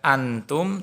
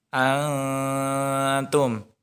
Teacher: ada nun mati bertemu dengan huruf tak itu maka dibaca samar-samar Jadi bukan dibaca Anto tetapi dibaca samar am Tom nah seperti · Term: bacaan Ikhfa